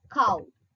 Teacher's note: A back open unrounded vowel to a back rounded vowel between close and half close